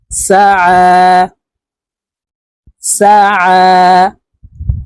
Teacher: আইন হরফকে হালুকের মধ্যখান থেকে চাপ দিয়ে উচ্চারণ করতে হবে কারণ আইনের মাখরাজ হালকের মধ্যখান থেকে হবে